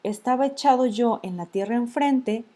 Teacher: la última A de estaba y la primera E de echado se van a considerar como una sola sílaba. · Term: sinalefa